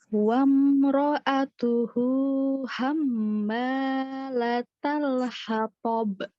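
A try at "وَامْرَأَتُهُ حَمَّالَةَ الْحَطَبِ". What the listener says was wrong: Bagus, tapi mim tasdidnya kurang dengung. Ayo dengung. Harus dengung.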